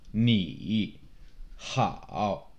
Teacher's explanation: Third tone, it starts low, it drops and kind of bottoms out in your voice and then comes back up.